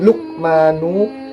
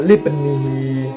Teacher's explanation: Jadi dalam penggalan ayat Luqmanu libnihi itu mengandung hukum bacaan qalqalah sugro ya. Karena terdapat huruf qalqalah yaitu qaf mati dan ba mati, sehingga cara membacanya itu agak memantul.